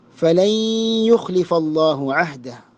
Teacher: നൂനിൻ്റെ ശബ്ദം അവിടെ ഇദ്ഗാം ചെയ്യേണ്ടതാണ്. സുക്കൂനുള്ള നൂനിനെ യാ ഇൻ ലയിപ്പിച്ച് മണിച്ചുകൊണ്ട് ഓതേണ്ടതാണ്. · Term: ഇദ്ഗാം ബിഗുന്ന